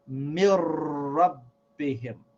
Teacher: this noon with sakin becomes silent, and we pronounce this ra as if it has a shad on it